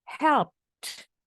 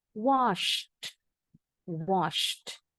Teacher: harus ada bunyi T-nya kedengeran di belakang.